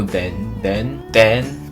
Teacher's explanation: there are many many ways to describe the Singaporean accent some of it is the merged dental fricative